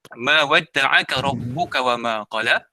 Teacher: Ma ni adalah ma asli, dibaca panjang dua harakat.